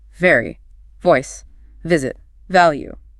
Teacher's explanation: Your lips are not round. Instead, your top front teeth lightly rest against your bottom lip, and you push voiced air through that small gap creating a distinct buzz or vibration on your lip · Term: English v